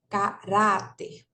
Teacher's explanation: a crase então o acento agudo geralmente ele indica que eh a vogal é pronunciada com som aberto